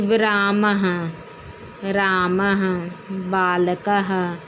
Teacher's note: विसर्ग कह रहे हैं कि ये स्वर नहीं है। विसर्ग जो लगा है होता है उसको हम आधा हा के रूप में उच्चारण करते हैं।